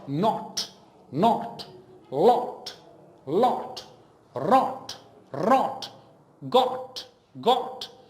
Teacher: you do not round your lips greatly you just do a slight rounding